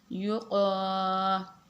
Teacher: یہ بڑا کاف ہے یعنی کہ نقطے والا کاف، تو اس کو ہم حلق سے پڑھیں گے۔